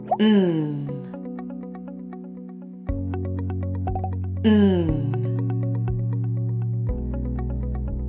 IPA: n